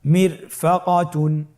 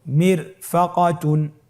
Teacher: এখানেও একই রকম হুকুম, যে র সাকিন তার ডানে এসেছে জের এবং বামে কোনো মোটা হরফ নাই, এই জন্যে রকে পাতলা করে পড়তে হবে